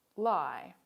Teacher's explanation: There's one lateral in English, a voiced alveolar lateral, with which the tip or blade of the tongue touches the alveolar ridge, but with one or both sides of it lowered. So this is the sound at the beginning of the word lie, and the symbol for it is just the letter L.